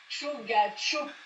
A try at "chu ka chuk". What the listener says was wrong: Non, chu ka chuk. C'est un K, c'est pas un gars. Chu ka chuk.